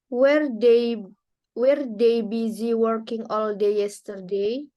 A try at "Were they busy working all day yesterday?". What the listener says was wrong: Were, bukan where. Were they?